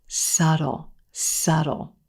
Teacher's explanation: the b in this word is totally silent